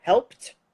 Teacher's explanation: your p, that's p, is unvoiced. And so you've got a t coming down.